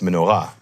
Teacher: but it's menor-ah with the emphasis on the “ah”